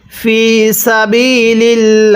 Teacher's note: এটাকে সাবিলিল্লাহ পড়লে পড়াটা সহি শুদ্ধ হবে না, কারণ আল্লাহ শব্দের পূর্বে এরকম জেদ দেখলে এই আল্লাহ শব্দটা চিকন করে পড়বেন।